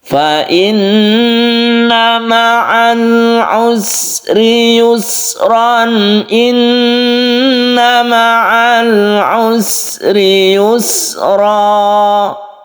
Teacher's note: Untuk sin ini jangan dipantulkan, berdesis.